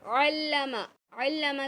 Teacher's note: पूरे ध्यान के साथ देखिए, दाल के नीचे ज़ेर है और उसके बाद या साकिन है, तो हम क्या करेंगे, या मद्दा है तो एक अलिफ की मकदार खींचेंगे। अल्लमा, अल्लमा का आइन हलक के दरमियानी हिस्से से निकलेगा और मीम को नहीं खींचेंगे।